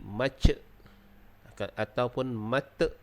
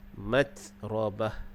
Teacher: Kemudian ada huruf ta yang di atasnya ada sukun, matrabah. Jadi huruf ta ni dia bersifat dengan berangin, jadi pastikan dia berangin